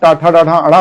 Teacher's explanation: टाठा डाढ़ा अड़ा बोलकर देखिए तो मूर्धा पर आपकी जिह्वा लड़ेगी